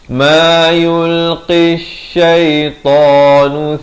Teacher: ada lam syamsiah, lam tidak dibunyikan